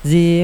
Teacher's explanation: Kasr bertemu ya sukun panjang dua harakat. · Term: mad thobii, mad tabi'i